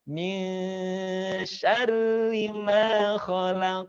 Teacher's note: Kemudian perhatikan ayat kedua, min syarri, nunnya dia dikasih warna menandakan dia gunnah, tahan. Ingat, tahan di rongga hidung